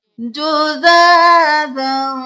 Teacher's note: کھڑی زبر ہے الف کے برابر کھینچیں گے